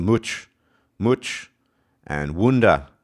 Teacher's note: But one thing you will hear in common, they both have the oo sound. Of course, it's a bit stronger in the Geordie, the Newcastle upon Tyne variety